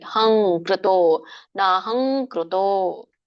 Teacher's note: ಕಕ್ಕೆ ಏನ್ ಬಂತು, ಕಕಗಂಗ ಬಂದಿದೆ. ಹಾಗಾಗಿ ಂಗ ಅನುಸ್ವಾರ ಬರ್ಬೇಕಲ್ಲಿ. ಹಂಕೃತೋ, ನಾಹಂಕೃತೋ ನೋಡಿ.